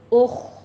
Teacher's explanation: خا پر پڑھتے ہوئے ہمس آئے گی اوپر